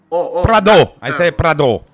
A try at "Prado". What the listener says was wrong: No, Prado. No. It's not French. Prado. Oh, open. Oh.